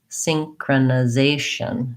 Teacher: we have secondary stress on the first syllable so there's a little bit of stress there a little bit longer